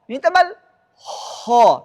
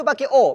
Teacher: Kalau o bibir harus membulat, o. Nah, sedangkan fathah bibir tidak membulat, a. Membulat enggak? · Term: fathah yang ditebalkan